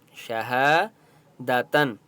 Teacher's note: شہ الف مدہ ہے، ہا کو ایک الف کی مقدار کھینچ کر پڑھیں گے، شہادتن۔ اب یہاں پر آپ دیکھیں تنوین ہے لیکن یہاں پر بھی ہم نے اخفا نہیں کرنا کیونکہ آگے عین ہے، حرف حلقی ہے، ٹھیک ہے۔